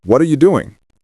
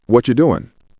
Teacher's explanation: try linking words together smoothly. What are you doing? Often sounds like, what you doing?